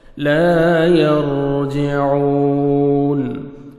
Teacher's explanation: را ساکن سے پہلے زبر ہے، را کو آپ نے پر کرنا ہے. عین کو آپ نے اپنے مخرج سے ادا کرنا ہے.